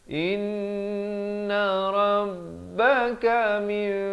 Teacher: Nun mati yang diberikan huruf mim kecil yang ekornya ke bawah ini adalah huruf ataupun hukum iqlab di sini. Ditukarkan daripada bunyi min kepada bunyi mim.